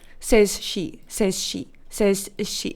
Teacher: There was like a little pause between says and she.